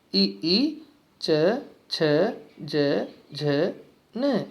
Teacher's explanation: तो तालु से उसका आघात होता है, तो इसलिए इनको तालु स्थान से जाना जाता है।